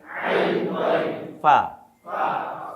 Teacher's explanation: দাঁতের আগার নিচের ঠোঁটের পেটের সাথে মিলিয়ে ফাটা ভালো হয় আর কি